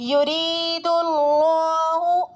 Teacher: اسی طرح یرید اللہ, یا متحرک ہے. را پر یا مدہ ہو رہا ہے اور را باریک بھی ہوگی کیونکہ زیر ہے